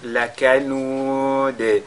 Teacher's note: à la fin, on fait donc al-Qalqala sur la lettre Dal, sur laquelle on marque la pause